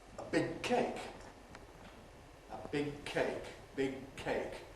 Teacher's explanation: We make the velar closure, switch the voicing off, keep the hold, and finally release it voiceless with aspiration.